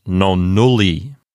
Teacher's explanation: it contains a long U. And not only that, it's a closed syllable. So it's definitely a long syllable, and so it will get the accent.